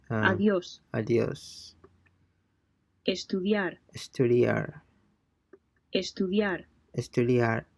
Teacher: note that the d sound is soft and sounds much more like a th than a d